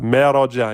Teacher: il a aminci le ma, le dja et emphatisé le ra.